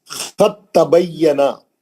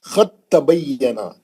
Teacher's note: خط تبینا، کیونکہ دال اور تا کا مخرج ایک ہی ہے. دال جو ہے تا کے اندر ادغام کر لے گی. خط، اب دال پڑھیں گے ہی نہیں.